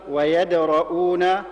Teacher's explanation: نرقق الدال ونفخم الراء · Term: تفخيم الراء